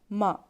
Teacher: دونوں ہونٹوں کو سوکھے حصے سے میم ادا ہوتا ہے